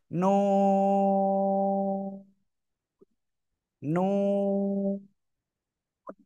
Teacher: অক্ষরটা কি জিহ্বার আগা তার বরাবর উপরে তালুর সাথে লাগিয়ে দুই ঠোঁট হালকা গোল মতো হবে